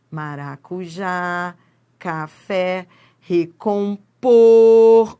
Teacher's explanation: Quanto a posição da sílaba tônica, as palavras classificam-se em oxítonas. A sílaba tônica é a última sílaba da palavra